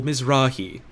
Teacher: emphasis goes on the second syllable